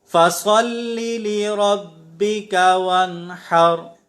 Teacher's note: یہاں را پر زبر ہے، لہٰذا ہم اسے پر پڑھیں گے